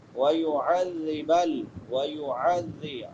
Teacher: بصدقہم ویعذب ویعذب عین، حمزہ نہیں پڑھنا، عین پڑھنی ہے. عین کہاں سے ادا ہوتی ہے؟ وسط حلق سے، حلق کے درمیان سے. وَيُعَذِّبَ ذال آ گیا ہے عین کے بعد، ذال نرم حروف میں سے ہے، اس کو نرمی سے ادا کریں گے.